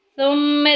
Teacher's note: میم مشدد آ گیا، غنہ کریں گے، ناک میں آواز لے کے جائیں گے